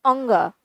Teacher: तो मुख और नाक दोनों से यह शब्द बोला जा रहा है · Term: अनुनासिक